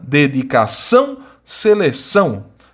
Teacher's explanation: são duas palavras oxítonas porque a sílaba tônica é a última